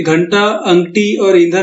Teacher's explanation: घंटा, अंगठी और ईंधन में नून की आवाज साफ साफ सुनाई दे रही है या ना की आवाज साफ साफ सुनाई दे रही है। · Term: अनुस्वार